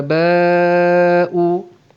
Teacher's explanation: Alif mad bertemu dengan hamzah dalam satu perkataan, mad wajib muttasil kita panjangkan 4 harakat ataupun 5 harakat.